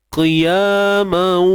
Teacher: Tanwin masuk dalam waw. Tapi masuk tu tidak sempurna. Qiyamau. Pastikan bunyi hidung berlakulah. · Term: idgham bi gunnah naqis